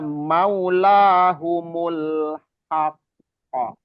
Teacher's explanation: Jadi jangan langsung dipantulkan, tapi seperti ada jeda gitu ya. Itu kubro, qalqalah kubro, karena dia berhenti, qafnya ada tasdid